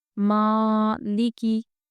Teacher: ماں ہم کھینچ رہے ہیں اور لکی جلدی پڑھ رہے ہیں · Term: کھڑا زبر